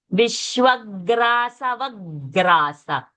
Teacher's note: See, the mouth has remained open, and from the kantha, from the throat, the gutter, the sound comes.